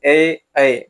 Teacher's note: अब देखिए ए ऐका जीभ जो है वो कंठ कंठ का तो प्रयोग इसमें हो ही रहा है और उसके साथ-साथ तालु में भी इसको तालु में भी इसे लगाया जा रहा है। जैसे ए ऐ बोल के देखिएगा तो आपका जीभ जो है तालू में भी सटेगा